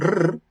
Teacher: pronunciarla como una vibrante múltiple, así muy marcada